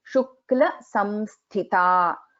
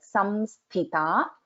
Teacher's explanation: Tha is a Mahaprana and there is a Anuswara here.